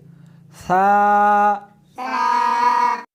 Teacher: اس حرف کو زبان کو دونوں دانتوں کے درمیان رکھ کر پڑھیں گے